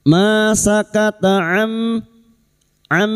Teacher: nun sukun bertemu mim idugom biguna masuk pada huruf mim dan mendingung selama tiga harakat